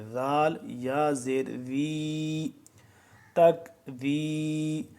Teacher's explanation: زبان کی نوک دانتوں کے درمیان باہر ذرا نکالیں گے، نرمی سے پڑھیں گے